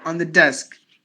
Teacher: not stressing not enunciating the part on the desk no enunciation just swallow the volume